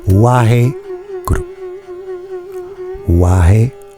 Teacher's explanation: Donc on chuchote le mantra afin que le gourou ou le guru soit presque inaudible, donc il faut bien rouler le R